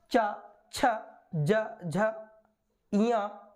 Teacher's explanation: ये तालु में स्पर्श तो करते ही करते हैं, इसके साथ साथ ये संघर्ष भी पैदा करते हैं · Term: स्पर्श संघर्षी व्यंजन